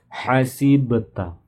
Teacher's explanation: Ba-nya memantul ya, karena dia qalqalah.